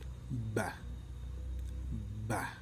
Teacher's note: Okay, in first place, we talk about the consonant sound B. This consonant sound is voiced. The place of articulation is bilabial, the manner of articulation is plosive, and the position of soft palate is oral.